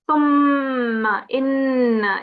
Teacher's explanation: here on the mim mushaddad, give yourself 2 seconds. So it's thumma, inna, even here 2 seconds.